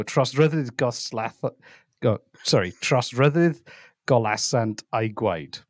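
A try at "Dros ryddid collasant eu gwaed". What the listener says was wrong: No, you were pronouncing the double L as an L. It's so dros ryddid collasant.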